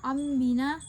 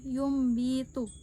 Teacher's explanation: Iqlab terjadi ketika nun sukun atau tanwin bertemu dengan ba. Cara membacanya adalah menggantikan huruf nun sukun dan tanwin menjadi suara mim sukun, lalu disembunyikan ke dalam huruf ba disertai dengan dengung.